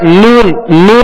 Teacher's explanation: नून कहेंगे तो नाक से आवाज भी लौट रही है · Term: गुना आनी